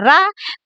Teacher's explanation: जब हम रा बोलते हैं रा, तो हमारी जीभ में कंपन होता है। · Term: प्रकंपित